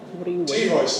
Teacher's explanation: What happens in American English? ‘T-voicing’. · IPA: [ ˈwʌt̬ ɚ ju ∖_weɪt̬_ɪŋ fɔːr ]